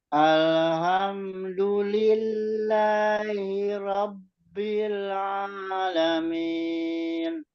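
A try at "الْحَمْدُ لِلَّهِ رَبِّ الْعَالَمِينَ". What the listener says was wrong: Untuk yang pertama tadi lam jangan sampai memantul ya Pak ya. Terus ha. Jadi ingat jangan tebal. Ha-nya ha tipis, ha yang di tengah. Jadi alhamdulillahi rabbil alamin.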